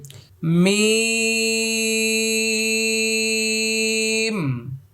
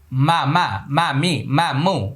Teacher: মিম, শুরুতেও ঠোঁট লাগবে, শেষও ঠোঁট লেগে যাবে। মা মা মা মি মা মু, এভাবে মিম।